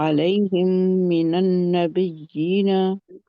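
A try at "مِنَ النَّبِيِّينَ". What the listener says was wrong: नबी मिनन नबी, बई बई नहीं है, ये मदलीन नहीं है, ये मद है। मिनन नबी नबी, जहां पे नबर होगी। नबी नरम रखना है, या नरम है। बी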